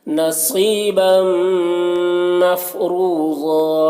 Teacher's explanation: تنوین کو میم سے ملا کر پڑھیں گے، اس کو ادغام ناقص کہتے ہیں، غنہ کے ساتھ پڑھنا ہے۔ مفروضا را کو پر پڑھنا ہے اور یہاں پر واو مدہ ہے، اور ضاد میں 2 زبر کی تنوین ہے تو وقف کی صورت میں 1 زبر کے ساتھ الف پڑھا جائے گا۔